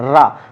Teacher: तो रा करते हैं तो जीभ हमारे आगे हिस्सा, नीचे वाले दांत का जो पीछे मसूड़ा होता है उसमें टकराता है और पीछे की तरफ मुड़ जाता है